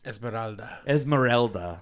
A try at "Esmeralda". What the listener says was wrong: No, you got to roll the R though.